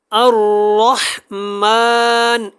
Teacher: الرحمن نہ پڑھیں، کیونکہ حمزہ کو را کے ساتھ جب اچھے سے نہیں ملائیں گے تو اس کی جو تشدید ہے وہ ادا نہیں ہوگی